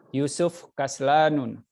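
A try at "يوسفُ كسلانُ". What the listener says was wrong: Nah, Yusufu ya, jadi jangan disukun ya. Yusufu Kaslanu.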